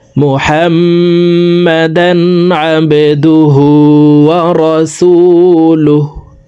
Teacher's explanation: হাকে ওয়াকফের ক্ষেত্রে সাকিন করে ফেলবো